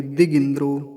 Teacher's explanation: गकार पर भी ह्रस्व इकार और दकार पर भी ह्रस्व इकार है, छोटी ई की मात्राएं हैं।